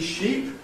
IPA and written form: ʃip (sheep)